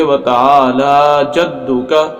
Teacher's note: وتعالی لام کے اوپر کھڑی زبر ہے، اور کھڑی زبر کو لمبا کیا جاتا ہے، کھینچا جاتا ہے